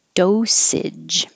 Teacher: this age is not stressed so it changes to edge compared to if it was just the word age